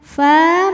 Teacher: Alal qoumil fa, fa mad thobi'i muqoddar karena fa'nya berbaris fathah panjang. Maka fa panjang dua harokat.